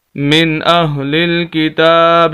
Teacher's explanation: نون ساکن ہے لیکن غنہ نہیں ہوگا، وجہ اس کی ہے کہ حروف حلقی میں سے آگے حمزہ آ گیا ہے، 6 حروف حلقی ہیں، حمزہ، ہا، عین، ہا، غین، خا، اگر ان میں سے کوئی لفظ آ جائے تو پھر غنہ نہیں ہوتا۔